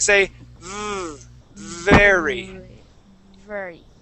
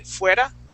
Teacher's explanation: your teeth go up on top of your bottom lip. But with the V, we create a vibration saying V. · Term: V sound